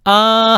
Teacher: 그냥 아 하면 소리가 아무런 장애를 받지 않고 목에서 그대로 쭉 나오지